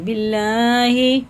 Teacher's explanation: اللہ کا لام زیر کے ساتھ ہے تو باریکی پڑھیں گے